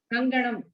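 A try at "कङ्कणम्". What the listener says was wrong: Not Kanganam. Kanganam is in Tamil. Kankanam. Ka, not Ga.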